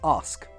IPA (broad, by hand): ɑːsk